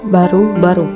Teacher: B, hidup, oral, bilabial, klosik